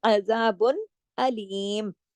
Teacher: आइन को गले से पढ़ना, अलिफ की तरह नहीं